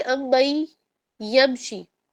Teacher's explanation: اچھا یہاں دیکھیے امبئی یمشی، میم شدہ میں کامل غنہ ہو رہا ہے، اوکے، مکمل غنہ یعنی کہ 2 الف کے برابر ناک کے اندر وائبریشن والا غنہ. اس کے بعد نون کو ڈراپ کریں گے، میم کو یا سے جوائن کریں گے، لیکن نون کی موجودگی کا اثر پڑ جائے گا، کیا ہوگا، غنہ ہو جائے گا، جس کو ہم کہتے ہیں ادغام.